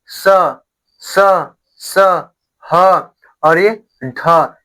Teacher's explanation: मुंह से ज्यादा हवा निकल रही है, तो ये क्या होते हैं महाप्राण।